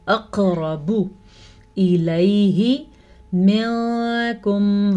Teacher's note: قاف کے اوپر ساکن ہے تو یہاں پہ جھٹکا ہوگا، اس جھٹکے کو کلکلا کہتے ہیں